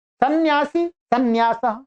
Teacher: अनुस्वार का उच्चारण हम कर ही नहीं रहे। यदि करेंगे तो यह भी सही है। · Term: न का उच्चारण